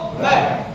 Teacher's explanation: लेकिन व बोला तो नीचे वाला होठ ऊपर वाले दांत को टच कर रहा है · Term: दंतोष्ठ